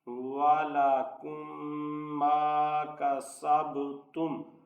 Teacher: اب یہاں میم ساکن کے بعد میم ہے، اس لیے یہاں ادغام شفوی ہوگا کہ اس میم پہ غنہ کر کے پڑھیں گے۔